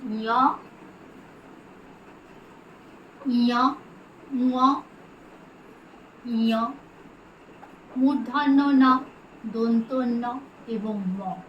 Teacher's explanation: অনুনাসিক বর্ণ বা নাসিক্য বর্ণ, কারণ এই বর্ণগুলি উচ্চারণের সময় একটা নাকি নাকি সুর বেরোয়